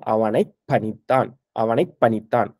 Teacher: அப்போ இந்த இப்புக்கு அப்புறம் பா வந்து வரும்பொழுது, இந்த பா வந்து மெலிந்து ஒலிக்கக்கூடாது. வல்லினமாக ஒலிக்க வேண்டும்.